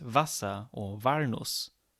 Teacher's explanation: In German, there is only the fricative v. There is no w in Standard German. So where there is a W, it's pronounced like an English V, like in words such as Wasser or Walnuss.